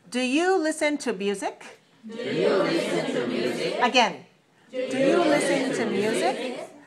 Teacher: So we want to make rising intonation, use rising intonation on the yes, no question.